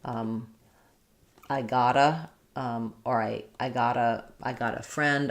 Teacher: They heard it from native speakers, and so they're naturally using a flap.